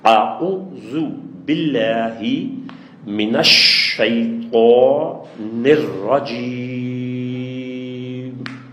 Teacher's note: اب میں نے شین پہ جو زور دیا تھا نا، وہ اس لیے کہ شد ہے اس کے اوپر